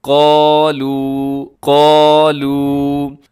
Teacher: قاف کو موٹا پڑھنا ہے، اس کو دوسرا کالو نہیں بنا دینا، کالو درست نہیں ہے بلکہ قالو قالو۔